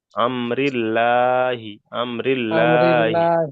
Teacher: আর যদি জেদ থাকে, যেমন এখানে আল্লাহ শব্দের পূর্বে জের এসছে, এখানে লা পড়তে হবে, এখানে বারিক।